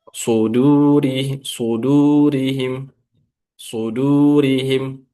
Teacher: Nah, shortnya yang dibaca tebal, dalnya tidak, harus dipisahkan.